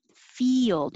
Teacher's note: your tongue is going very high for fee and then it slides down like a y